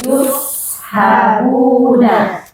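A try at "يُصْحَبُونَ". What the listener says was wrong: Kalau tebalnya dihilangkan, kalau sod jadi fatal nanti, jadi sin, jadi rubah huruf. Ini keliru, ya. Yushabuna. Nah, lihat kata di depannya sin sekarang. Cuma beda sin sama sodnya saja. Yushabuna.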